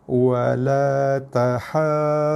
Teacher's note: jaga ha panjang 6 harakat. Cukup 6 barulah tekan atas huruf bersabdu iaitu huruf dha.